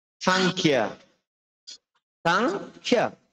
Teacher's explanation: খর মধ্যে একটা চাপ দিতে হবে কারণ খটা মহাপ্রাণ।